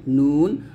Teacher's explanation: নুন জিহ্বার আগা তার বরাবর উপরের তালুর সঙ্গে লাগবে